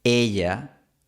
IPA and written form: 'e.ʝa (ella)